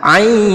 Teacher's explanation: ainnya ini kita panjangkan 6 harokat, ain. Nah karena di ujungnya ada nun sukun bertemu sod, maka kita baca 3 harokat ya, ain, seperti itu.